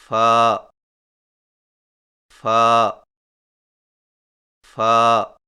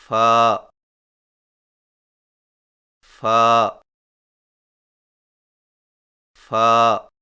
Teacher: فا کی ادائیگی میں سامنے والے اوپر کے دو دانتوں کے سروں کو نچلے ہونٹ کے گیلے حصہ پر لگا کر باریک آواز میں پڑھیں